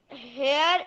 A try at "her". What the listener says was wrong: it is not hair, it is her.